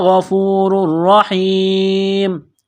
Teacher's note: غین کو موٹا کرنا ہے، را کو موٹا کرنا ہے · پیش کی وجہ سے تنوین ہے، یہاں پر را کے اوپر تشدید ہے تو اس را کو، تنوین کو را کے ساتھ ملانا ہے، پلس کرنا ہے، اس را کو موٹا کرنا ہے. یا ساکن سے پہلے زیر ہے، ایک الف کے برابر کھینچنا ہے.